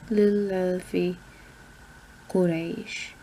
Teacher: I do the double A because it's an aleph. And aleph is a long A sound.